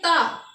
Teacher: जब जीभ मेरा दांत को टच करेगा तो वो क्या होगा? दंत हो जाएगा।